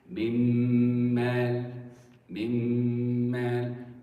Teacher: You don't hear the nun. You only hear the ghunna on the second letter. That's why we say idgham. · The nun has been completely merged and assimilated with the next letter.